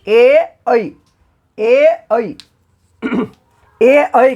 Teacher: ए और ऐ का उच्चारण कंठ और तालु के सहयोग से होता है। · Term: कंठ तालु